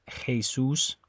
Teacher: it's a little more guttural than it is in English